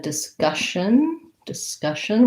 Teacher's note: we have second syllable stress uh and this first di could again say d or da